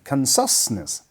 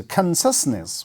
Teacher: We have a stress on the first syllable.